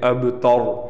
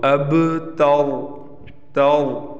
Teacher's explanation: یہ تا باریک ہے، را موٹا ہے، تو اب تور۔